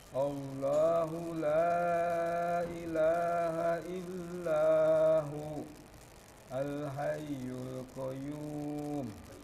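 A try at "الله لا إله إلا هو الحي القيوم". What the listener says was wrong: Coba dilanjut, disambung, jangan diwakaf. La ilaha illa huwal hayyul qayyum. Di situ baru diwakaf. Huwal hayyul, tahan, hayyul qayyum.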